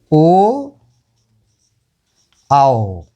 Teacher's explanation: ओ और आओ, ओ और आओ का उच्चारण जो होता है कंठ और ओष्ठ के द्वारा होता है। ओ आओ, इसका उच्चारण जो है कंठ और ओष्ठ, कंठ और ओष्ठ लगते हैं। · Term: कंठोष्ठ